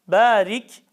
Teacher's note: ra harfinin harekesi Esre olduğu için tam ince okunur